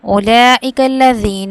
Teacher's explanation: مد کو ہم کتنی مقدار میں کھینچتے ہیں؟ 5 الف کے برابر